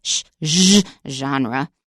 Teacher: But in American English, we'd probably say genre. And that is actually just a sh sound, but you voice it